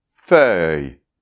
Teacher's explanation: après en fait, on a [œ] bien ouvert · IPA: [fœj]